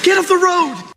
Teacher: His pronunciation includes an instance of T flapping, where the T in words like get become a D sound.